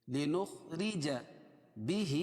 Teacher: کھڑے زیر قائم مقام یا مدہ کے 1 الف کے برابر کھینچ کے پڑھیں گے